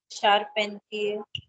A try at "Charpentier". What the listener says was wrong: Char again. Char. Yeah, so it's also about see, because words in French are a combination of different syllables. You have to identify all of them. So don't miss out and mostly yahi EN wala hi miss out hota hai.